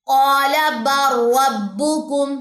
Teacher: ये लाम नहीं पढ़ा जाएगा बल्कि लाम का र के अंदर इदगाम हो जाएगा। · یہ لام نہیں پڑھا جائے گا بلکہ لام کا را کے اندر ادغام ہو جائے گا، ٹھیک ہے۔ مدغم فی میں اس طرح داخل ہو جائے گا کہ مدغم کی کوئی صفت باقی ہی نہ رہے، اس کو تام کہتے ہیں۔ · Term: इदगाम मुतकार